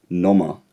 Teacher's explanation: the o is a non-high vowel and it comes at the end of a syllable